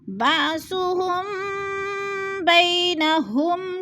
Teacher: میم ساکن کے بعد حرف با گیا ہے تو ادھر اخفاء شفوی ہو رہا ہے، یعنی غنہ کریں گے، ناک میں آواز لے جائیں گے